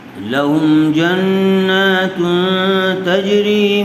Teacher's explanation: تنوین کے بعد حروف اخفاء میں سے تا آیا ہوا ہے، اس لیے غنّے کے ساتھ اخفاء کر کے پڑھیں گے